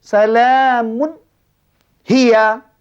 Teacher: hendaklah dibaca dengan nyata tanpa didengungkan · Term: izhar halqi